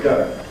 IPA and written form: gəɪŋ (going)